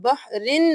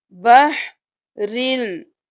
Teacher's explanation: رو کو لام کے ساتھ ملائیں گے